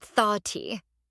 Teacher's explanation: For thought, the vowel sound is a short O or an aw sound